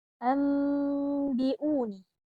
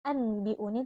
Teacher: Nah, apabila nun sukun atau tanwin bertemu dengan huruf ba, maka cara membacanya adalah meleburkan ke dalam huruf ba, lalu kemudian disertai dengan dengung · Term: hukum bacaan iklab